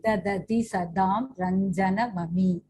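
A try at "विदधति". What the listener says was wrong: The second dha is Mahaprana. Vidadhati. That should be clearer.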